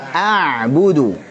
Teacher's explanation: Saat ucapin ain, antum alirkan sedikit suaranya. Namanya sifat tawassut atau bainiyah.